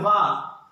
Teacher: వ అన్నప్పుడు చూసుకోండి దంతు ఓస్ట్ పెదాలు మరియు పళ్ళు కలుస్తున్నాయి అందుకు దాన్ని ఏమన్నారు దాన్ని దంతోష్ట అన్నాం ఈ విధంగా మనకి ఉచ్చారణ స్థానాలు